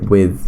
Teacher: there's a th sound that you you make by putting your tongue in between your teeth so it's like with like the th sound right in Romanian